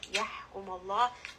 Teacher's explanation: ha from the middle of the throat. Name of Allah here is going to be heavy because the letter before has a fatha.